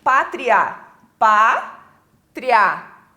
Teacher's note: Porque agora a ordem mudou, ó. Começa com a semivogal e termina na vogal. Então começou fraco e cresceu. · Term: ditongo crescente oral